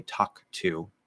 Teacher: give a little weak K and then say the T